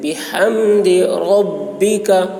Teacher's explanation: بحمد میں ہا اس کو بھی حلق سے ادا کریں گے. بحمد ربک، ربک را پوری ہوگی.